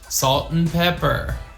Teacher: it's just an n sound to connect these two words